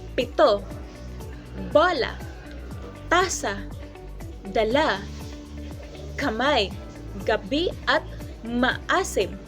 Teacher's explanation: Sa paraan ng artikulasyong pasara o plosive sa Ingles, ang daluyan ng hangin ay tuluyang hinaharangan tapos biglang pinapalabas.